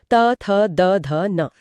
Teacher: यहां जीभ दांतों को स्पर्श करती है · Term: त वर्ग